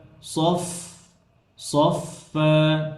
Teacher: এই যে সফা, ফায়ের মধ্যে বাতাস বের করতে হবে, হামস আছে